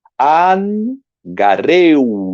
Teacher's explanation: Olha aqui um ditongo, gareu. No ditongo, o acento vem na segunda vogal, mas é lido como se estivesse na primeira.